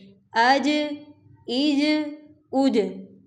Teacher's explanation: اب جیم ہے یہاں پر تو اس میں قلقلہ پیدا کریں گے، پچھلے حرف کو اگلے حرف کے ساتھ ہی ملا کر پڑھیں گے، بلکہ ساتھ اس میں قلقلہ بھی پیدا کریں گے